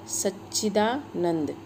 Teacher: सत में जो त है त को हमने च वर्ग में च वर्ग के अनुरूप च में ही बदल दिया है, तो यहाँ पर शब्द बन गया सच्चिदानंद।